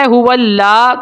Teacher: ہو اللہ، ہو اللہ، موٹا پڑھنا ہے لام کو اور ایک الف تک کھینچنا ہے۔ اگر کوئی باریک پڑھتا ہے ہو اللہ تو غلط ہو جائے گا